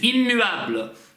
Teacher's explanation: Мы немножко чуть-чуть задерживаемся губами на этой М